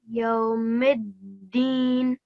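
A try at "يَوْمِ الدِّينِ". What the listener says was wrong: MashaAllah. Very, very nice reading.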